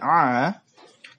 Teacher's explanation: dia keluar dari tenggorokan bagian tengah dan dia antara ditahan dan tidak ditahan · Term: Ain